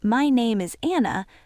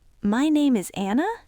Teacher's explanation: Instead of your voice going down, it goes up. So instead of saying my name is Anna, you say my name is Anna. · When you push your pitch up at the end of a sentence like that, you are turning a statement of fact into a question. You are signaling to the listener that you are not sure >> exactly. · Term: rising intonation